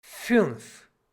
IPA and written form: fʏnf (fünf)